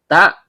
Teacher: Ta ujung lidah bertemu dengan pangkal gigi seri atas